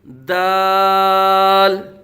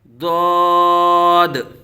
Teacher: دال کو باریک پڑھیں گے، جبکہ ضاد کو حروف مستعلیہ میں سے ہونے کی وجہ سے ضاد کو پر پڑھیں گے، اور جبکہ دال کا مخرج بھی علیحدہ ہے زبان کے نوک اور اوپر کے دانتوں کی جڑ سے، جبکہ ضاد جو ہے یہ زبان کی کروٹ اور اوپر کی داڑھوں کی جڑ سے ادا ہوتا ہے۔